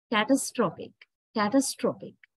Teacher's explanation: strength or stress is weakened so a becomes a catastrophic catastrophic so now we are stressing the third syllable